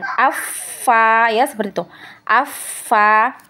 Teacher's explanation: Nah, kemudian untuk rohoah ya, untuk yang rohoah tadi itu dialirkan ya, seperti huruf fa tadi ya. Huruf fa dia punya sifat hamas, kemudian dia juga punya sifat rohoah, maka ketika ditasdid ya dia mengalir